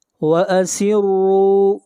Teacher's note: را کو یہاں پر موٹا پڑھا جائے گا، را کے اوپر پیش ہے، اور را کو کھینچ کر پڑھیں گے ایک الف کے برابر، یہاں پر واو مدہ ہے۔